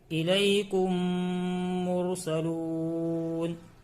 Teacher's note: میم ساکن کے بعد میم آئے تو ادغام شفوی ہوگا، میم کو میم سے ملا کر گنہ کے ساتھ پڑھیں گے